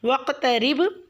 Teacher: رب میں را کو باریک پڑھیں گے، اور با ساکن پہ آپ نے قلقلہ کرنا ہے کیونکہ آیت کے اینڈ میں با ساکن ہو رہا ہے۔ · واقترب میں واو کو قاف سے ملائیں گے، اور وہاں پہ آپ قلقلہ کریں گے کیونکہ قاف ساکن ہے